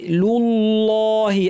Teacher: আল্লাহ লামটা properly ভারি করতে হবে